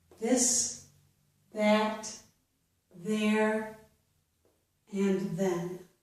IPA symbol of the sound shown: ð